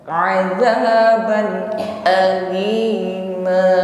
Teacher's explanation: ketika mengucapkan hamzah pada lafaz alima justru tidak boleh lemah, hamzah syiddah kuat, bukan azaban aini, bukan ainima, azaban alima.